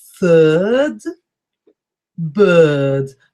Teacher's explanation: It's got an R after the I, which makes it a little bit longer, but we never pronounce the R.